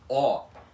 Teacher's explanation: o som aberto da letra O na língua portuguesa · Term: o aberto